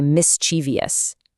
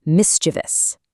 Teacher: People love to add an extra I and say mischievous. Nope, it's only 3 syllables, mischievous.